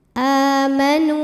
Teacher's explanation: sebab ada wau sukun yang didahului dhamah cara membacanya dipanjangkan nunnya dua harakat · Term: mad thobi'i, mad tabi'i zahiri